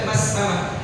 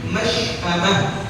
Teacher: jangan diibdal dengan huruf sin, jangan dibaca mas'amah, tapi masy'amah